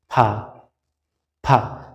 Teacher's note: নিচের ঠোঁটটা উপরের আগায় লাগান, ফা ফা। জাস্ট এই ঠোঁট যদি আপনার উপরের দাঁতের আগায় লাগিয়ে বলে দেন তাহলে ফা হয়ে যায়।